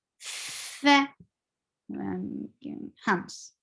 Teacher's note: Fa, fa has flow of breath. This is a hums letter.